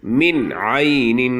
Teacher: دا نون ساکن به صفا ویلی کېږي او غنه به پکې نه کېږي، ځکه د دې نون ساکن نه وروستو د مرۍ د حرفونو نه عین راغلی دی. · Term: اظهار